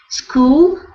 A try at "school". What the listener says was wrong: So when you were reading, I was hearing a little bit of an eh before the S sound, like a school, a school. be careful.